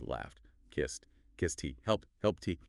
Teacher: It sounds like t when the base verb ends in an unvoiced consonant sound. Sounds made without your vocal cords vibrating like k p ss ch f.